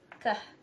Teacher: Kah place of articulation velar, manner of articulation still plosive, and kah include two voiceless.